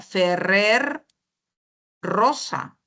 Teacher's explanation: la vibrante y esta vibrante se puede escuchar en r y en doble r